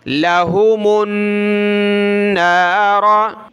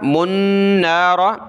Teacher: लाम ज़बल्ला हा पेशू लहू, मीम आगे जो है नून के साथ मिलाएंगे, गुन्ना होगा। लहुमुन नार, ये देखिए नून के साथ मीम को मिलाया था।